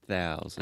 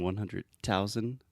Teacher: really try to exaggerate the TH. I was hearing just say traditional T sound. So you're saying 100,000, but it should be thousand.